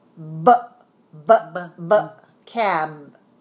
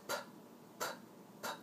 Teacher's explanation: is the adjective that describes lips so the label stops and we have two one is voiced and one is voiceless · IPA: /b/ and /p/